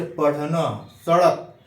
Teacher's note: इसमें जीभ जो है पलट कर मूर्धा को टच करती है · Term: उच्छिप्त व्यंजन